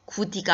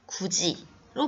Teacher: 드와 이가 만나서 즈로 바뀌었죠. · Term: 구개음화